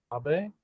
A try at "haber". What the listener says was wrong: Casi. You don't want the E though. You want to keep it an A at the end. So, aber. Aber. Aber.